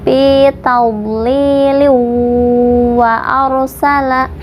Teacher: hukumnya idgham bi gunnah, dimasukkan disertai dengung